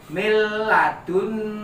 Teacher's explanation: Biasanya kalau di Al-Quran di sini ada tanda tasdid. Nah, bacanya jadinya menghilangkan huruf N, nyambung ke huruf L. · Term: idgham bila gunah